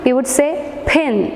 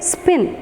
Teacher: The p comes along with a puff of air.